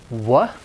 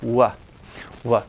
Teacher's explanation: labial velar because you're using the velum the velum is moving the back of the tongue is moving kind of toward the velum and you're also moving your lips too